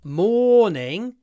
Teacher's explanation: when we have o r followed by a consonant like morning it's always a long or